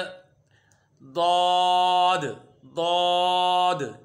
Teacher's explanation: दौद ज़बान की करवट ऊपर की दाढ़ों की जड़ से अदा होता है।